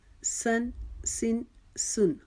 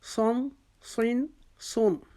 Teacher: سین کو ہم نے باریک پڑھا تھا، صاد کو ہم نے موٹا پڑھا، کیونکہ صاد حروف مستعلیہ میں سے ہے، اس کو ہم نے موٹا کر کے پڑھنا ہے۔